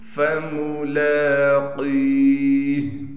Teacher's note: فملاقیہ، لام پر کڑا زبر ہونے کی وجہ سے لام کو کھینچیں گے، قاف کو موٹا بھی پڑھیں گے اور قاف کے بعد یا ہونے کی وجہ سے قاف کو ایک الف کی مقدار کھینچ کر پڑھیں گے